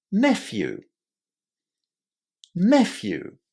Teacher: Stress on the first syllable and a normal short e as in pet or get.